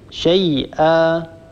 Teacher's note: شيئا آخرها أيضا تنوين نصب، إذا وقفنا على هذه الكلمة نعوض عن تنوين النصب بألف تمد بمقدار حركتين · نعوض عن تنوين النصب هذا بألف تمد بمقدار حركتين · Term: مد العوض